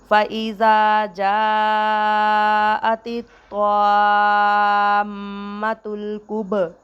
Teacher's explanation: با ساکن ہے تو با پر قلقلہ ہوگا